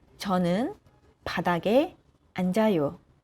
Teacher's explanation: So here, 니은 stays and 지읒 goes to the position of O. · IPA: [저는 바다게 안자요]